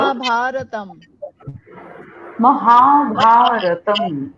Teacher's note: মটাকে ছোট্ট করে, আকারগুলোকে বড় করে, আবার তমটাকে বড় করে